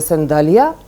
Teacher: Појава која што е специфика за градскиот тетовски говор, а секако е поврзана нели со оваа лексема, е редукција на вокалот во акцентиран, но и во неакцентиран слог, така што изговорот на вокалот А е затемнет и речиси се редуцира до еден ирационален звук, среден по изговор, меѓу гласот А и полугласот А